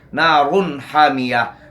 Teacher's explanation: تنوین کو اپنے مخرج سے بغیر غنہ زمانی کے ادا کریں گے. حامیہ، ہا کو وسط حلق سے ادا کرنا ہے، حامیہ. · را پر پیش ہیں، یہ موٹی پڑھی جائے گی. اور نون تنوین کے بعد حروف حلقی میں سے ہا ہے، یہاں اظہار حلقی ہوگا، یعنی تنوین کا غنہ کے ساتھ نہیں پڑھیں گے، بلکہ تنوین کو اپنے مخرج سے بغیر غنہ زمانی کے ادا کریں گے. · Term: را موٹا